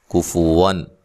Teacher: کفوان یہاں نون تنوین کا اظہار ہے، غنہ نہیں کریں گے